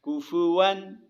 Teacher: حروف یرملون میں کے 6 حرفوں میں سے لام آ رہا ہے لہٰذا یہاں پہ غنہ نہیں ہوگا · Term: غنے کے بغیر ادغام